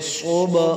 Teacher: با پیش صوب، با پہ قلقلہ کریں گے، صاد موٹا کریں گے